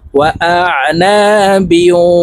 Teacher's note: ওয়া আ, নুন আলিফ জবর না, ওয়া আ না, বা ওয়াও দুই জের বিউ, ইদগামে বা গুন্না, তানউইনের পরে ইদগামে বা গুন্নার হরফ ওয়াও আসছে, এই কারণে এই বা ওয়ার সাথে গুন্নার সহিত মিলাইয়া পড়ব।